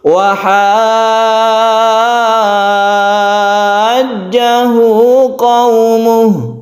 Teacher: Maksudnya adalah yang 3 alif tadi itu kita panjangkan membacanya. Ha dipanjangkan sampai 3 alif baru kita bertasydid. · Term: mad lazim mutawal